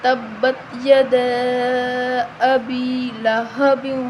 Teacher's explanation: یہاں جو ہے یا ہے وہ یا مدہ ہے تو ہم اس کو 1 الف کے برابر لمبا کریں گے